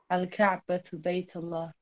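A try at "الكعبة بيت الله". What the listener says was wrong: So I can't hear the end of the sentence as usual. So what is it? Is it Kasra? Is it Dhamma? Is it Fatha? How do you pronounce the end of the sentence? Is it Baytullahu? Baytullaha? Baytullahi? What is it?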